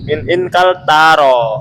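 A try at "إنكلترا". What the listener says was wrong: Ingkal tarro. Tasdid roknya.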